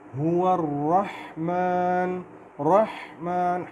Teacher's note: یہاں پہ رحمان کے را کو ہم موٹا کریں گے۔ هو الرحمن، رحمان، ہا کی آواز کا خیال رکھیں گے۔